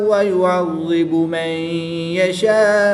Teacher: نون ساکن کے بعد یا حروف ینملون میں سے ہے تو یہاں پر بھی ادغام مع الغنہ کریں گے